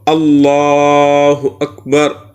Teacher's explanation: سب سے پہلے ہم لفظ اللہ کا لام اس کو ہم پر پڑھیں، جیسے اللہ، ایک ہے اللہ باریک، ایک ہے اللہ، تو اذان میں ہم اللہ کو پر پڑھیں تو اللہ اکبر۔